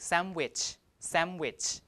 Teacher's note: So the 2 places of articulation are different. Now the assimilation takes place here where N changes to M. to match the place of articulation of W. So people in fast speech would pronounce it like sandwich, sandwich, because both M and W share the same place of articulation, right?